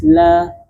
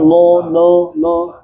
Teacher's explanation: Dia itu istifal pangkal lidah kita turun searanya menjadi tipis la. · Nah, hati-hati, kesalahan dalam melafazkan lam juga sering terjadi, yaitu istifal. Pangkal lidah kita turun. Sehingga suaranya menjadi tipis. La. Nah, jadi bukan lo.